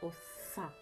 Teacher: звук цей аж сичить так вірно це звук си твердий приголосний